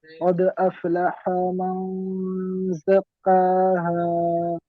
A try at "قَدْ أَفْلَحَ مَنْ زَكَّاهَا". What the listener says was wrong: জি হাটা একটু টান হয়ে যাচ্ছে। কদ আফলাহা মান, আফলাহা মান।